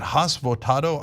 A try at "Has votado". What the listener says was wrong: The H is silent. It's like Has Votado.